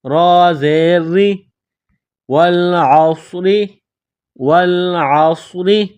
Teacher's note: را کے نیچے زیر ہے تو را کو باریک پڑھیں گے، را زیر ری، والعصر، والعصر۔